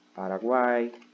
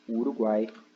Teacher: Aqui a gente tem uma semivogal, uma vogal e uma semivogal. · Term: tritongo